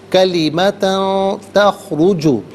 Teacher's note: وَلَا لِآبَائِهِمْ كَبُرَتْ، را پر زبر ہے، را کو پر کر کے پڑھیں گے، کلیمتاً، تا پر 2 زبر کی تنوین، اس کے بعد تا حرف اخفا ہے، تو تنوین کو یہاں اخفا کے ساتھ پڑھیں گے۔ اخفا کہتے ہیں ناک میں آواز لے جا کر گنگنانا